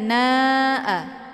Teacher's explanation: Tandanya ada mad tabi'i, yaitu ada alif sebelumnya harokat fathah, kemudian bertemu dengan hamzah dalam satu kalimat. Maka mad wajib muttasil ini ataupun na ini dibaca panjang, boleh 4 atau 5 kali ketukan